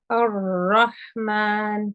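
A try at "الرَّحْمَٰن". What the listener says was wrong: Yes, this is much better.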